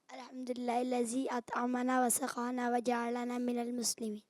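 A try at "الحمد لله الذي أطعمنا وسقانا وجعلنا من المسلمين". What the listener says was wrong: وجعلنا مسلمین. اور سخانا نہیں ہوتا, سقانا ہوتا ہے. سقانا قاف. دوبارہ سنیں. الحمدللہ الذی اطعمنا. اطعمنا.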